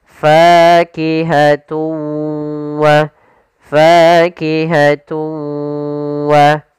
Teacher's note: suara tanwinnya kita masukkan langsung ke huruf waw dan kemudian kita tahan gunnahnya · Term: idgham bi gunnah